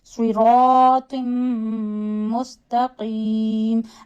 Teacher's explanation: Take mim sound into the nose and stretch it. · Again do ya madda, but here you can stretch ya up to 3 to 5 fingers because of waqf tam. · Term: gunna